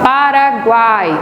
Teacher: Quase não se percebe o U de tão fraco que ele é. O A é a vogal. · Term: tritongo oral